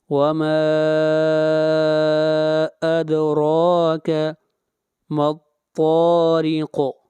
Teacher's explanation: را کو موٹا پڑھیں گے اور را کو کھینچ کر پڑھیں گے 1 الف کے برابر۔ وما ادراک ما الطارق، طا کو کھینچ کر پڑھیں گے اور را کو باریک پڑھیں گے اور قاف کے اوپر قلقلہ ہوگا۔